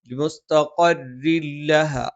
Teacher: അപ്പൊ ഇവിടെ ലിമുസ്തഖരിൻ തൻവീന് ശേഷം ലാ വന്നു. അത് ഇദ്ഗാമും ബിലാ ഗുന്നയാണ്, മണിക്കാതെ ഉച്ചരിക്കണം.